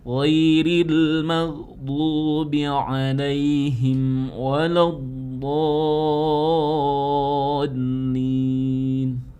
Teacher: itu kan huruf ghin, sementara ghin itu bukan qalqalah. Jadi jangan dipantulkan.